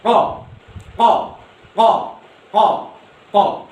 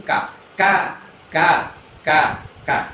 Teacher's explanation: huruf ko itu letaknya pas di bawahnya lidah kecil